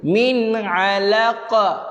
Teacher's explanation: Ada qalqalah kubra. Qalqalah kubra. Qalqalah kubra, lantunkan dia.